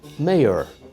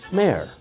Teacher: Some people say mayor with 2 syllables, and I say mayor with 1.